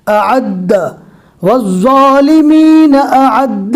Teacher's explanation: عین کو حلق سے اور حمزہ کو نارمل پڑھنا ہے